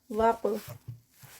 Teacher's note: یہاں پر قاف ہے اور قاف ہیوی ہے اور اس کا قلقلہ ہے کیونکہ یہ ساکن حالت میں ہے